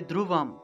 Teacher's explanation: অনুস্বারের সংস্কৃত উচ্চারণ হলো ম এর মতো, ম। তাহলে ধ্রুবম, কোনো একটা শব্দের শেষে যদি অনুস্বার থাকে তাহলে ম রূপে উচ্চারণ করা হয়।